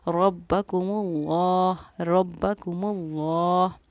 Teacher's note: लफ्ज़ अल्लाह के लाम से पहले पेश था, तो लफ्ज़ अल्लाह के लाम को पूरी यानी कि मोटा पढ़ेंगे, मुँह भर के पढ़ेंगे।